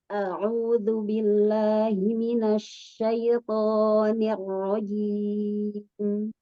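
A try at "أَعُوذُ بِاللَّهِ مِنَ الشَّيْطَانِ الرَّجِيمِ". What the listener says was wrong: Coba Umi to-nya dibuka lagi. Minasyaiton. To. Tadi di awal di a'udzu perjelas hamzahnya Umi. A'udzu billah. A'udzu billah. Jadi pelan-pelan aja bacanya. Tinggal di kata minasyaito di huruf to-nya kurang kuat dan kurang dibuka Umi.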